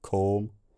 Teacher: this long vowel raises in tongue height